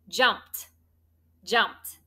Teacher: if you say that word jumped doesn't it kind of sound like a t